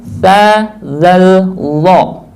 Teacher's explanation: ujung lidah dengan ujung gigi atas, yaitu ta, zal, lo